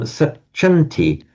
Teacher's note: the m will automatically become a n before a t